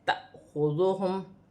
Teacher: الف پر جزم کی حرکت ہے، اسے جھٹکے کے ساتھ پڑھا جائے گا